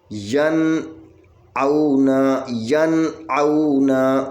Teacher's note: نون ساکن کے اوپر آواز کٹ کر آگے حمزہ پڑھیں گے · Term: اظہار